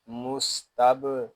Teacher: اس میں کلکلا خوب ظاہر کریں گے